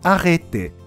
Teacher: 口を横に引いたエの音でアレテと発音します